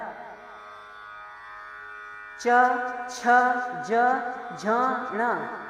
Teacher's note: च छ ज झ ण ये तालव्य कहे गए क्योंकि इनके उच्चारण के समय जीभ तालु से लगती है।